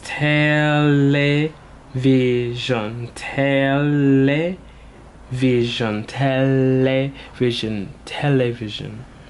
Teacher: it just makes an elongated L sound